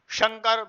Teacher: यह तालु से बोला जाता है शकार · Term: तालव्य सकार